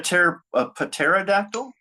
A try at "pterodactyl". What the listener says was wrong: The P is silent.